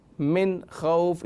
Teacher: من خوف یہاں غنہ نہیں ہے، حروف حلقے میں سے اظہار کا قاعدہ ہے